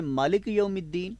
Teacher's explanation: لفظ مالک میں میم پر کھڑا زبر آ رہا ہے، اب اس کی آواز ڈبل ہوگی